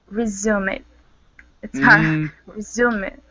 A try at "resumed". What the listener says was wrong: You're adding an ed sound that we don't want. We want resumed. Try to work on those ed endings. There are rules, ed endings.